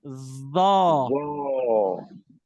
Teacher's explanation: हमने दांतों को मिलने नहीं देना, ठीक है ना, दांतों को हमने मिलने नहीं देना, लेकिन अब लफ्ज मोटा निकलेगा।